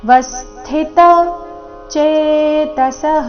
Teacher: ಜ್ಞಾನ ವಸ್ಥಿತ ವ ಮೇಲೆ ಆಘಾತ